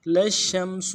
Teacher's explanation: للشمس میں لام کو شین کے ساتھ ملانا ہے، شین تفشی واضح کرنا ہے، شین کو میم کے ساتھ ملانا ہے، شین کے اوپر تشدید زور دیں گے اور سین کو پیش کو نرم سے ادا کریں گے.